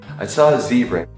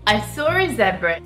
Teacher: The Americans say ah, and the English people say it more like oh.